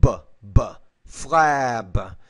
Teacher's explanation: When you have a voiced consonant, the B, it means there's vibration in your vocal folds when you produce a sound.